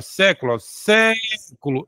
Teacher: a proparoxítona que é quando a sílaba mais forte está na anti penúltima